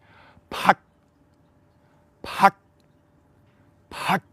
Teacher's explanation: the final consonant is close to a T, but we actually curl our tongue backwards to pronounce, like the tongue of a flame. We're hitting as much as we can, the hard palate, maybe even close to the soft palate of the roof of our mouth.